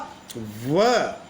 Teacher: ये दांत और ओष्ठ से पूर्ण सहयोग से बोला जाने वाला व ये दंतोष्ठ वर्ण है।